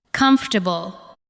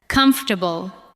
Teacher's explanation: Do not give every syllable the same weight. Let the first part carry the stress. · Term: word stress